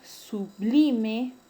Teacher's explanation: El término sublime es grave porque su mayor fuerza de voz está en la penúltima sílaba. Y no se tilda porque termina en una vocal.